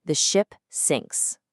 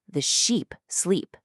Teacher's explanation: A short I sound gives you the ship sinks. Okay? But stretch that out to a long e sound and suddenly the sheep sleep.